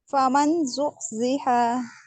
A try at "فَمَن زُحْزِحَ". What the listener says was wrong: यहाँ पर आप इसका इजहार कर रही हैं, फमन जुहसिहा, ये तो इजहार हो रहा है, गुन्ना कहाँ होगा। फमन जुहसिहा,